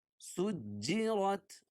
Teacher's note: سین کو جیم میں سختی کے ساتھ ملائیں گے کیونکہ جیم پر تشدید ہے